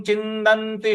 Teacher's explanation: छी, छ पर छोटी की मात्रा है छी, आधा न पर हमको आघात देना है। छिन्दन्ति, जो आधा न दो जगह पे है, दोनों जगह हमको आघात देना है।